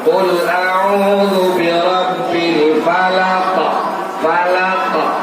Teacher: Karena sukun berhenti, maka timbul kaidah tajwid namanya qalqalahu. Harus dipantulkan